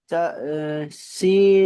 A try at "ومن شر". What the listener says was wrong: বলবেন না, শিন উচ্চারণ করার পরে তারপরে ওয়ামে বলবেন। ওয়াও জবর ওয়া। মিন। ওয়ামিন। শিন রা জবর শার। ওয়ামিন শার।